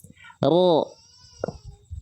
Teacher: ujung lidahnya nggak nempel sehingga dia membuat sedikit celah karena yang nempel adalah bagian punggung lidahnya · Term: huruf ro